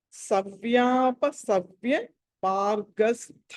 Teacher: First యా దగ్గర దీర్ఘం ఉంది, రెండో యా దగ్గర దీర్ఘం లేదు కాబట్టి దీన్ని ఆ తర్వాత అలాగే స్థా అక్కడ మహాప్రాణం.